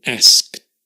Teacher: we often drop the K, right, as well, in asked